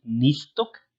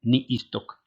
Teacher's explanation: No es lo mismo decir nistok, como una vocal larga, que decir ni istok